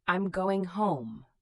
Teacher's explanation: Your voice goes down at the end of a statement. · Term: intonation